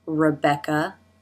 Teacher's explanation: Tongue up in the back for the K sound.